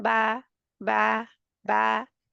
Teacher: जब हम कहें बा, बंद होंठों के गीले हिस्से को जुदा जब हम करते हैं एक दूसरे से, तो बा अदा होती है। ये भी बारीक हर्फ है, जैसे हम कहें बा, बा, बा, बै नहीं कहना, बै रॉन्ग है।